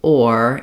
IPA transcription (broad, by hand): ɔr